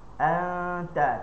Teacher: Jadi er bab ikhfa ni dia ikhfa dari sudut maksud ikhfanya adalah kita mensamarkan bunyi huruf nun. Maksudnya kita tak boleh sebut huruf nun dengan jelas. Contoh kita baca anta, tak boleh baca anta.